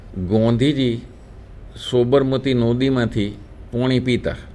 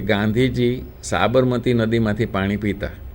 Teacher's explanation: वो जो लोग जब गुजराती बोलते हैं तो आकारांत या अनुस्वार का उच्चार ओकारांत में करते हैं।